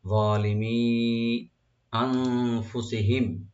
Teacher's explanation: নুন সাকিন এখানে ইখফা করবো আমরা, আর মিম সাকিন এখানে জাহার হবে, এখানে গুন্না হবে না।